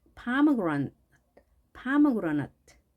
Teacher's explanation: 강세가 앞에 있습니다. 그러다 보니까 뒤에 있는 모음, 많이 오는 이 모음들이 소리들이 약하게 발음되는데요.